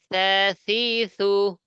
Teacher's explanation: জিবার আগা দাঁতের আগা নরম আওয়াজ দিয়ে, সা সি সু। তা তা তা সি সি সু এই আওয়াজ যেন না আসে, জিবার আগা দাঁতের আগা নরম আওয়াজ দিয়ে, এটা শক্ত আওয়াজ।